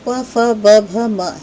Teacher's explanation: जो प वर्ग है, त वर्ग के आगे आने वाला वर्ग है, उसका उच्चारण स्थान होता है ओष्ठ, यानी जो प फ ब भ म है ये होंठों की मदद से बोले जाते हैं